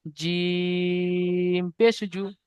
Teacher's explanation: জিমটা তিন আলিফ টান আছে, ওই জন্য তিন আলিফ টান দিয়ে বলতে হবে।